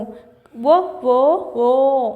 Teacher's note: సో ఇది మనకు తాలవ్యము ఓ ఓ ఓ ఏం వస్తుంది షేప్ వస్తుంది మన పెదాలు అనేటివి ఒక షేప్ లో వస్తున్నాయి ఓ షేప్ రౌండ్ షేప్ లో వస్తున్నాయి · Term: ఓస్ట్యాలు